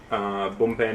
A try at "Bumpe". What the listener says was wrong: It's not a B.